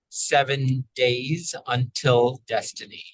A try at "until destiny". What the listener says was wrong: Until a little higher palate on the I before the L. Don't close too early. Until. So we got taller before the L. Until. Until destiny. That's more a lift right in the center of the mouth. The tongue's lifted more in the center, and we keep that palate up. The I, the vowel, that tends to be one that your palate gets a little lazy.